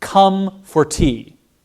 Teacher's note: But even just how I said that shows the stress timed. Come and tea are stressed. For is an unstressed syllable, so I just glide over that